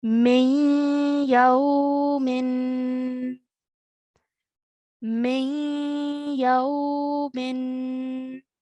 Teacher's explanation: When I join the meme to the ya, make a partial or a half nasal sound as you join the two letters together.